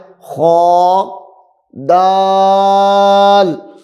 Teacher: خا کو لمبا نہیں کرنا، اس کو موٹا کر کے پڑھنا ہے